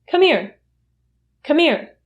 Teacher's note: the h sound in here is completely eliminated. So you don't hear that sound at all.